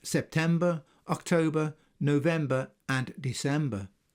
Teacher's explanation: The dropping of the final R in pronunciation is perfectly understandable. We have only to consider the way most English people pronounce the month names September, October, November and December.